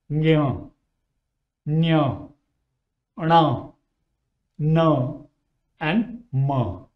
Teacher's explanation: And the last column is the nasal sound. That means you produce these sounds with the flow of air through your nose.